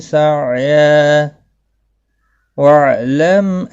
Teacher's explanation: ملانے کی صورت میں ادغام با غنہ ہوگا ، تنوین کے بعد یرملون کا واو آیا ہے اس لیے،